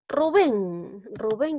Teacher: Rubén lleva la mayor fuerza de voz en la sílaba ven. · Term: aguda